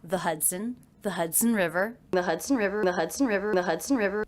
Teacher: Did you notice how the second and unstressed syllable of Hudson was pronounced? It's written with the letter O, but there's the schwa vowel in there.